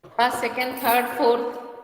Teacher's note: rising टू falling, मतलब कि list के लास्ट तक जाते जाते ये फॉलिंग हो जाएगा